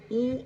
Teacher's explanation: ఊ అనాలంటే ఏం చేయాలి? ఈ మూతి ఊ అని ముందుకు సాగాలి. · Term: ఉకారం